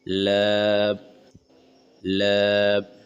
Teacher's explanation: زبان کے شروع والے حصہ اوپر کے سامنے والے دانتوں کے جڑ سے مل کر لام